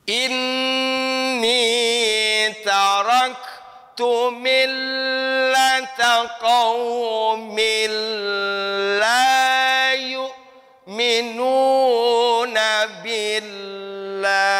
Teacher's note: Qaumin, min bertemu dengan lam, idgham bila gunnah. Mil ditahan dulu, la-nya 2 harokat.